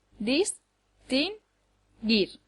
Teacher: distinguir lleva el acento en la última sílaba dis gir no puede llevarlo en ninguna de las otras dos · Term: acento prosódico, sílaba tónica